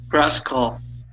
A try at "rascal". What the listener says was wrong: So instead of pronouncing that as an al, okay, it would be ol, rascal, rascal.